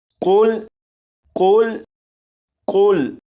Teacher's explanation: यहाँ पर देखें, ये जो लफ्ज़ है, इस लफ्ज़ के शुरू में कौफ है। इस कौफ को पूर यानी मोटा पढ़ेंगे और इस लफ्ज़ को पढ़ेंगे कुल कुल कुल।